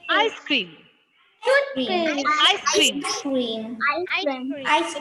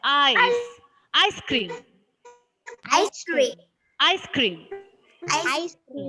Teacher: the stress is given to the first syllable of this compound word.